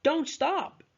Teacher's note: stop is stressed because it is a Content word while don't is a function word